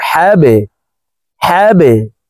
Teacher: এই বাকে নিচের দিকে ধাবিত করে কলকলাহ করে উচ্চারণ করব